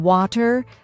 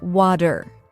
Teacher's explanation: another key feature is the flap T sound this is when the T in words like water or butter sounds more like a soft D